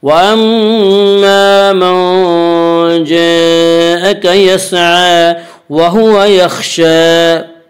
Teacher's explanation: خا کو پر پڑھیں گے، خا حروف مستعلیہ میں سے ہے، حروف مستعلیہ 7 ہیں جن کا مجموعہ خصہ ضغط نقیض ہے جو ہمیشہ ہر حال میں پورے پڑے جاتے ہیں۔